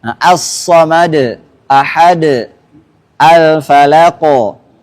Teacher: qalqalah kubra ketika kita wakaf yang tanpa tasdidah